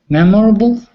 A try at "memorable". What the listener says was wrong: the only small thing is the pronunciation of memorable we actually almost have that silent o so it sounds like mem